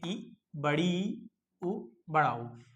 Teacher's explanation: समृत में क्या होता है, जब हम स्वर का उच्चारण कर रहे हैं ऐसे स्वर जिनके उच्चारण में हमारा मुंह को है लगभग बंद रहता है, उनको कहते हैं समृत स्वर।